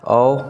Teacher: जीभ का पश्च भाग पश्च भाग काम करता है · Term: पश्च स्वर